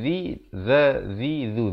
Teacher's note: Mala'ul ladzi, zi, zal di hujung lidah